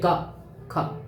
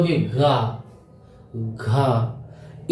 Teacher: इनमें कंपन नहीं होती है जैसे क ख इनमें कोई कंपन नहीं है और जैसे आगे बढ़ो ग ग घ इनमें कंपन होती है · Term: अघोष